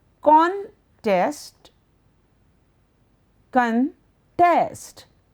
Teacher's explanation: You can either put a stress on the first syllable or the second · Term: word stress